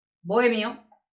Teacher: sí que se dan dos sílabas. Hay un hiato, ya sabéis que la o, la e, no se juntan, son dos sílabas separadas.